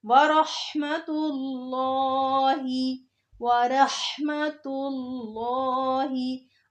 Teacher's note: लफ्ज़ अल्लाह आ रहा है और उससे पहले पेश आ रही है तो लफ्ज़ अल्लाह के नाम को खूब मोटा करके पढ़ेंगे।